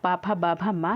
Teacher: ये दोनों ओष्ठों से मिलकर बोला जाता है। जब आप पा बोलेंगे तो दोनों ओष्ठ को मिलाकर बोलेंगे, फा या बा भा मा, तो ये दोनों ओष्ठों से मिलाकर बोलते हैं। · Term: पा वर्ग